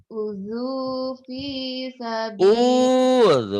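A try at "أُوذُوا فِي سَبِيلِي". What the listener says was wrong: Bukan uju. Udzu, zalnya jangan terlapu. Udzu. Udzu fi sabili.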